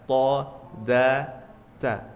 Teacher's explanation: Di ujung lidah apa saja hurufnya? Tha, dza, tsa. Kita rasakan tha, dza, tsa. Menempel gigi atas.